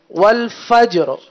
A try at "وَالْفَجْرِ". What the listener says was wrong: فجر، را بھی ظاہر کریں.